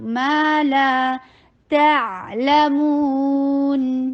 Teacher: ما 2 counts long، لا 2 counts long